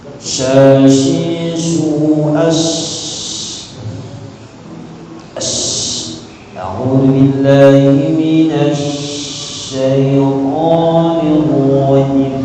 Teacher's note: kan makhraj shin itu kan di tengah lidah. Ini yang naik lidahnya aja, gitu. Bibirnya tidak ada itu.